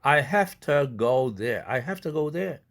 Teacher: 아까 have to가 have to 이렇게 무성동화 된다고 그랬죠. v가 f로 바뀐다고 그랬죠. 뒤에 있는 to라는 무성음의 영향을 받아서 역행동화로서.